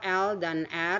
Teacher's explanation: liquids ada dua l dan R Semuanya masuk voiced